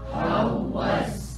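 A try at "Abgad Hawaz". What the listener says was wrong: It's not how was, because the S will come later. It's Z.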